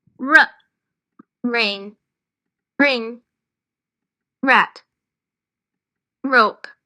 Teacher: நாக்கு மேல் பல்லில் உள் பக்கம் மடக்கி வச்சுட்டு ர கொஞ்சம் வைப்ரேட் ஆகிற மாதிரி இருக்கும்